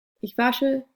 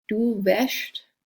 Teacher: So you can hear that vowel change. A to e.